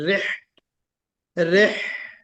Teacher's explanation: जब हा निकालेंगे तो हा में चूंकि हमस है ना, हमस, उसको हम वाज़ेह करें, रिह, रिह, ये, और हलक से निकल रहा है तो रिहलतश शिताइ वस्सैफ।